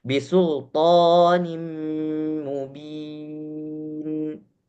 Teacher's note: Karena ketika kita bacakan sempurna masuk ke dalam huruf mim. Tidak ada tidak ada nun yang berbunyi sehingga langsung masuk ke mim. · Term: idgham bi gunnah